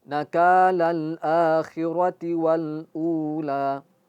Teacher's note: a-nya al akhirah itu ikut dua dua harakat. Wal ula, u-nya juga dua dua harakat, oke.